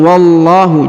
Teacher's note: Tidak perlu ada penekanan ya, meskipun ada tasdid.